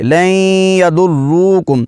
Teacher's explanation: را پر شد ہے، جماؤ کے ساتھ ادا کر کے آگے واو کو بھی پڑھیں گے